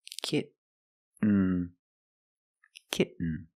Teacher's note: when you make the stop T the tongue is up almost in the end position so you don't have to change much